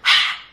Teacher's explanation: it's just pushing air outside of your mouth. No vocal cords are vibrating. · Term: ha sound